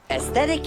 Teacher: that th will be very short and very light